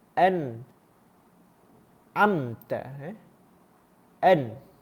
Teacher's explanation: Kerana hukum izhar khalqi dikena huruf nun bertemu dengan huruf ain, dibaca jelas dan tidak dengung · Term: Izhar halqi